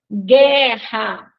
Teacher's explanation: Vejam que nós não escutamos o som do U, né? Então, aí a gente tem GU, que é um dígrafo.